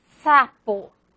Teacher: En castellano, es decir, en la lengua de su propia, en el dialecto castellano, en la variación lingüística del español propio de Madrid, de esa región donde surgió el castellano. De hecho, la fricativa alveolar sorda S solo se representa por la letra S. Su pronunciación es apical.